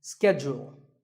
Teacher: It's not so much that it's mispronounced, it's just that it's said differently in the UK and in the US. In American English, this is schedule. The first syllable is ske and the second is jewel, schedule.